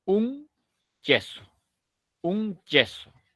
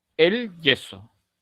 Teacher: Se cierra el conducto aquí, se hace la oclusión y luego explota en la fricción de yeso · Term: africada